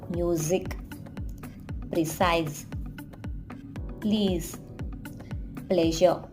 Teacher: Z sound is voiced and there is vibration in your throat